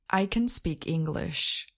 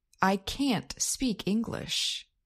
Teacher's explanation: Our statement could have been, I cannot speak English. Note that in both sentences with a negative auxiliary, can't or cannot, there is stress on the auxiliary verb · Americans generally stress auxiliary verbs in their negative forms. They generally do not stress auxiliary verbs when they are in their positive forms. · our affirmative sentence with the unstressed auxiliary and our negative sentence with the stressed auxiliary